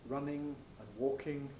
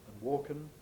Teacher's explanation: In non-received pronunciation, that is, in working class pronunciation that's considered incorrect, vulgar pronunciation, you get an alveolar nasal for the ing ending. So instead of running and walking, you get runnin' and walkin'.